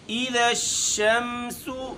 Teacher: ذال میں ہم اس کو باریک پڑھیں گے اور اس کے بعد شین میں تفشی کرنا ہے